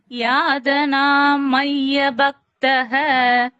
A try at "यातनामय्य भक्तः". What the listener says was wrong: यादनाम கிடையாது யாத்தனாம் யாத்தனாம் மைய பக்தः